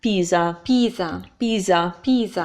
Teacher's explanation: So the S makes a Z sound. It's between 2 vowels and it's only one.